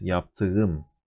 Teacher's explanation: I have to soften the k into soft G. · I have to harden the consonant from D to T.